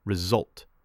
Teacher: Result gets stress on the second part.